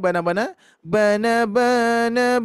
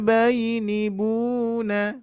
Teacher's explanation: Irama yang pertama ujungnya adalah datar nah Irama yang kedua adalah turun